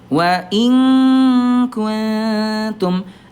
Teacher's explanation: nun bertemu dengan kaf didekatkan langsung ke kaf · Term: ikhfa ab'ad